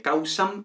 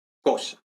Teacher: pérdida de M final como siempre, y luego monoptongación del diptongo au